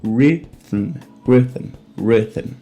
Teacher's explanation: a gente já tem o R retroflexo, um I curto, um T forte e terminando aqui com um M mudo. Então, rhythm, rhythm, rhythm.